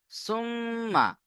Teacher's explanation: মিমের উপরে তাসদীদ, গুণনা করা ওয়াজিব, গুণনা করবেন।